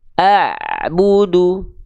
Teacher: pastikan suara Ain sukun ketika dilafalkan suaranya harus ada aliran sedikit ya suara yang mengalir mengalir sedikit jangan sampai terputus